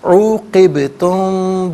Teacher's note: میم ساکن کو غننے کے ساتھ پڑھیں گے